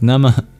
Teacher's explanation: at the end of NAMAH, we have a mini exhale. Sounds like you're breathing out very quickly.